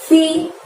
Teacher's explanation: Bu, si-nya dari huruf sa ya, seperti kalian lihat hurufnya. Si, ujung lidah dorong ke gigi atas